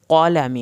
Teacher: क़ाफ को पुर करके पढ़ना है। लाम की ज़बर यहाँ पे लंबी ना हो।